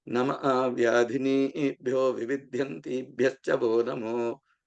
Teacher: Namo is coming from the word Namaha, because after the Visarga, or that H sound, or the H with a dot under, is being followed by another Na, or a N sound, a nasal sound. That is why the Namaha, Ha becomes O.